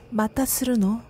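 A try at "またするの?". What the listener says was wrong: 근데 그거는 너무 좀 뭐랄까 그냥 다정한 느낌만 있고 좀 그 뒤에를 더 올려봐.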